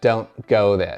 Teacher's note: Ese don't se comió la T otra vez. There se comió la R.